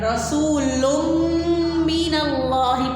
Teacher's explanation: تنوین کے بعد میم حرف یرملون میں سے ہے تو اس لیے ہم تنوین کی آواز کو اس میں مدغم کر رہے ہیں